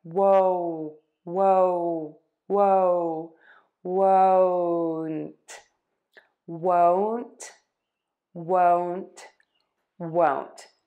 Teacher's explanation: And you are going to move from that W, oh. Your mouth is going to open a little tiny bit, and then it's going to pucker again. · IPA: /woʊnt/